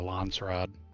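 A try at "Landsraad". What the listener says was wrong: There's no T. I keep saying Trod as well. It's SR Rod, so it's Landsrod.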